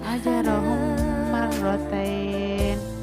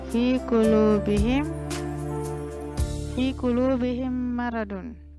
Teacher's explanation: Jadi dua huruf ini saling bertemu dengan huruf yang sama antara mim dengan mim. Nah, cara bacanya dengan memasukkan huruf mim sukun ke dalam huruf mim itu sendiri disertai dengan suara mendengung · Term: idgham mim